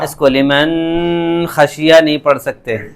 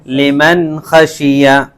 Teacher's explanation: نون ساکن اور تنوین کو بالکل ظاہر کر کے پڑھیں گے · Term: اظہار